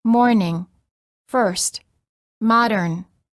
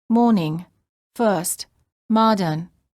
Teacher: The R before a consonant is also always pronounced in American English, but generally not pronounced in British English.